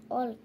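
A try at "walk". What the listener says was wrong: ওয়াল্ক নয়, ওয়াক। হ্যাঁ, ওয়াক বলবে। পড়ার সময় কিন্তু এটা এ বলা যাবে না, আ বলতে হবে।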